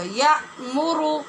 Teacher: یہاں جھٹکے سے آواز بند ہوگی اور را پور ہوگا